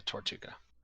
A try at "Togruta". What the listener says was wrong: But the T's at the very end. There's no T in the middle. The pronunciation guide says Togruta.